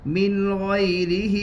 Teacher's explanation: نون کے اوپر جزم ہے, نون ساکین اور تنوین کی آواز یکساں ہوتی ہے. نون ساکین کے بعد حروف حلقی کے 6 حروف میں سے غین ہے, اس لیے نون کو ظاہر کر کے پڑھیں گے, اس کو اظہار حلقی کہتے ہیں.